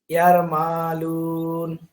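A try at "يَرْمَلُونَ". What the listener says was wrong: উম মা তো টান নেই, আপনারা মাদ পড়েননি? হুম, এখানে মাদের। হ্যাঁ, ইয়ারমালুন। হ্যাঁ, লামের সাথে মাদ আছে।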